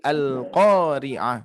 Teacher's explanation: qa-nya harus dibaca panjang 2 harokat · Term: mad 2 harokat